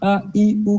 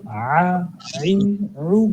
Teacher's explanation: ع ای عو, آ ای او, اس کو حمزہ کی طرح نہیں پڑھنا ہے, ا ای او کی بجائے آپ پڑھیں اس کو ع ای عو, گلے کی گہرائی سے پڑھیں اس کو